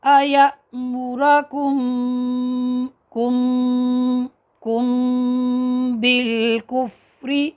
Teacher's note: میم ساکن کے بعد با آ جائے تو میم کو اس کے مخرج میں چھپا کر پڑھتے ہیں